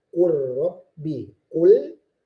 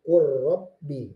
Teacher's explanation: Nah, jadi kalau bertemu nun yang sukun, nun yang mati yang tidak berharokat bertemu dengan ro, maka dibaca idgham tapi tidak boleh ada gunnahnya. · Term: idgham bi ghairi gunnah